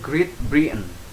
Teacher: Jadi bacanya bisa dengan glotal ya, glotal itu dengan si T-nya itu ditahan.